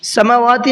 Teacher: سماواتی نہیں پڑھنا ہے، سماواتی میں صرف واو کھینچ رہا ہے، میم نہیں کھینچ رہا ہے، تو میم کو بھی کھینچنا ہے اور واو کو بھی کھینچنا ہے۔ والارض، دیکھیے یہاں پر میں نے وقف کیا ہے لیکن یہاں وقف کی علامت نہیں ہے تو پیچھے سے لوٹائیں گے۔